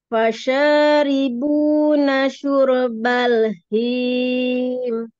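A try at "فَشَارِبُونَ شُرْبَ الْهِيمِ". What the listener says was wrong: Jangan naik. Baknya jangan naik. Syurbal. Tipis ya bun baknya.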